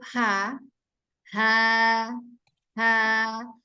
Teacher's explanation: Selain dia menggetarkan pita suara, dia juga menghembuskan udara. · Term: huruf H